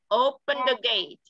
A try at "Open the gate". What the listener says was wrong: The nha con. Open the gate. The, chứ nó không phải ở.